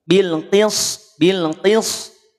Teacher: Kalau bil qis nanti bukan lagi sin tapi terdengarnya menjadi sod.